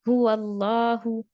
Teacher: یہاں پر لام جلالہ سے پہلے جو ہے فتحہ ہے، تو اسی لیے لام جو ہے ہیوی ہوگا، موٹا پڑھیں گے، پر پڑھیں گے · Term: لام موٹا